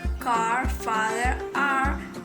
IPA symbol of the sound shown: ɑ: